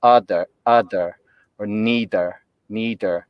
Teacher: uh dental plosive so almost like utter but it's not utter the tip of the tongue doesn't touch on the alveolar ridge it's still on the teeth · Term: voiced uh dental plosive